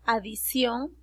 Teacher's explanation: esa adicción yo lo hablo como una s